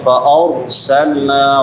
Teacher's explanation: را پر پڑھی جائے گی کیونکہ را ساکن ہے ما قبل فتحہ ہے